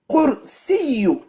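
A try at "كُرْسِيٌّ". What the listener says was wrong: Deux choses. À la fin, il y a deux. À la fin, c'est deux. Non, deux, ça fait quoi? Par contre, ton kef, il est mélangé avec qaf. C'est ka.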